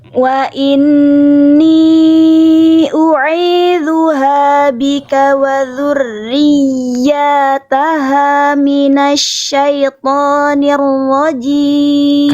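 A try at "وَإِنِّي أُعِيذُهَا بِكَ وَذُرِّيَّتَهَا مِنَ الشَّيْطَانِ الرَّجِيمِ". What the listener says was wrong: Karena fokus ke ya naber ya aja tapi kebablasan offside. Satu harokat atau dua harokat ini? Iya, lagi ya karena fokus di atas di naber bablas ya.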